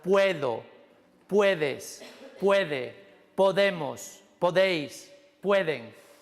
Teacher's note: vais a ver por qué el pod se convierte en pued, en sílaba acentuada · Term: alomorfo